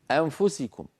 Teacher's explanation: وكذلك العرب في زمن النبوة في كلامهم اليومي يخفون النون عند حروف الإخفاء 15، فتقول العرب في زمن النبوة في الكلام العادي أنفسكم أم، فينتقلون من الهمزة إلى مخرج الفاء مباشرة أنفسكم، ولا يبقون من النون إلا غنتها خفيفة سريعة